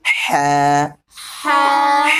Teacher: ح کا مخرج ہے حلق کا درمیانی حصہ